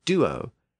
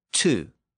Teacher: we can see that transition from the original D sound which is reflected in Latin and Greek in the word Duo and the T sound which is reflected in the English word to